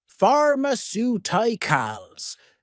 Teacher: Stress on the third to last syllable.